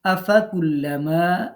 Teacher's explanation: মাতে এক আলিফ টান